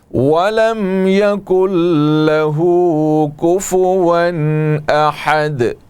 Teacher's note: ولم میم ساکن ہے, اس کے بعد یا ہے, میم میں اظہار ہوگا